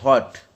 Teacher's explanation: open rounded for the vowel in hot